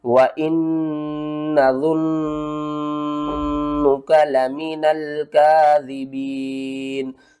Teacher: نون مشدد ہے، یہاں پر بھی ہم نے غنہ کرنا ہے